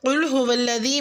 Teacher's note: قل هو الذی میں قاف کو پر اور دال کو نرمی سے ادا کریں